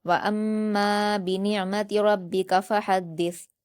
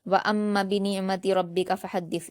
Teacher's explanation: وَأَمَّا پڑھتے ہوئے میم کے الف مدہ کو بہت اچھے سے 2 حرکات ادا کریں گے ، کیونکہ بہت سے اسٹوڈنٹس یہ مسٹیک کرتے ہیں کہ اس